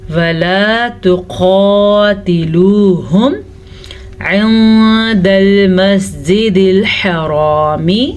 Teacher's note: نون ساکن کے بعد دال حروف اخفا میں سے ہے تو ہم نون ساکن کو چھپے ہوئے غنے کے ساتھ پڑھیں گے